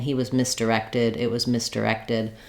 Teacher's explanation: if I'm just saying he was misdirected, it was misdirected, my main stress is still on the rected, so it's just like in directed, just adding one more syllable in front of my stress syllable.